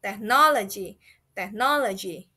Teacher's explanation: Similar to production, it has a middle emphasis on the middle syllable.